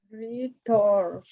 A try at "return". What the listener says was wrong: Pero no le ponga tanto énfasis a la segunda parte. A la U. Return. Más casi más si fuera ERN al final en el sonido. Return.